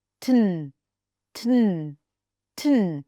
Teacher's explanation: let's connect the T and the N because the tongue is already in the same place